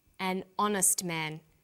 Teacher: The H is not pronounced, so honest sounds like it starts with a vowel.